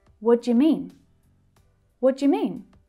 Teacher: mean is the most important word here in this question, so it's stressed. We hear it really clearly. But all of the others reduce down.